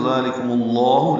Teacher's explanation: ذالکم میں ذال نرمی سے ادا کریں گے، 2 حرکات لمبا کریں گے، لام باریک ہے، کاف بھی باریک ہے، میم کی پیش کو لفظ اللہ کے لام سے ملا دیں گے تو ذالکم اللہ لام اسم جلالہ پر پڑھیں گے اور 2 حرکات لمبا کریں گے